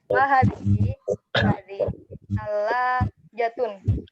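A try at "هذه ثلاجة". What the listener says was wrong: Ahsant.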